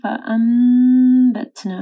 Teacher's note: فَأَنبَتْنَا، نون ساکن کے اوپر دیکھیں، نون کے اوپر چھوٹی سی میم ہے، ٹھیک ہے، اور اس کے بعد با ہے تو یہاں پہ اقلاب آ رہا ہے، غنہ ہوگا